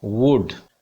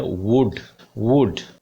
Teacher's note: W bilabial है और दोनों होठों को गोल करके बोला जाता है